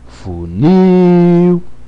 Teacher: Então o il está na sílaba tônica.